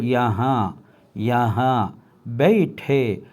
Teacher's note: யஹா எனும் பொழுது அங்கே ஹாவுக்கு பின்னால் ஒரு நூனே குன்ன வந்திருக்கின்றது. எனவே அதனை நாம் மூக்கால் வெளியாக்கி கொள்ள வேண்டும்.